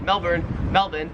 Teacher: the Australian accent just leaves the r off if it's ever in the last syllable of a word